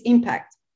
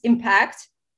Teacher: To impact, stress on the second syllable, and impact, stress on the first syllable.